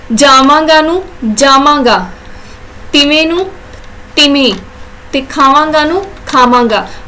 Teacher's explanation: ਵਵੇ ਧੁਨੀ ਨੂੰ ਮਮ ਵਿੱਚ ਬਦਲ ਦਿੰਦੇ ਆ